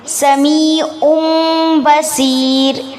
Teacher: تنوین کی آواز کو میم میں بدل دیں گے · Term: اقلاب